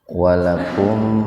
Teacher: Walakum idhar syafawi. Ada mim sukun ya, bertemu dengan fa secara terpisah. Jadi mimnya dibaca jelas di bibir itu.